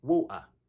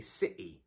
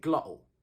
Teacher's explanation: that t sound in the middle has been removed entirely and there's a tiny pause there